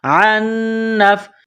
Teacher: نون مشدد ہے تو آواز ناک میں چھپائیں گے، یہاں غنہ کریں گے